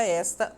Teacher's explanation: Observem que a palavra esta, a sílaba mais forte é o es